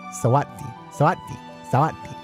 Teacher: Syllable final S is pronounced like a T in Thai.